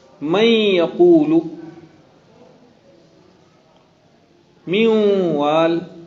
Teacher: میوال کے نون کو، من یقولو کی نون کو، دونوں نون کا مخرج ختم کر دیا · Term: ادغام ناقص